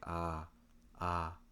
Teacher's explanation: To make the ah sound, you want to open your mouth wide and lower your tongue, so that way lots of air can go through your mouth. It should sound like ah, ah, like in lock, lock.